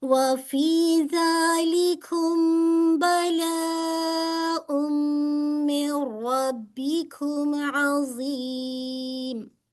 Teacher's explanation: ربکم نون کے ساتھ نون کو را میں مرج کرنا ہے، ٹھیک ہے. تو را کو ہیوی پڑے گا، ٹھیک ہے.